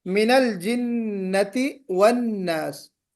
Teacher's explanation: मिनल जिन्नति वन्नास में नून में गुन्ना करना है दोनों जगह, मिनल जिन्नति वन्नास, नून पर मिनल जिन्ना और वन्नास दोनों जगह भी गुन्ना करना है आपको।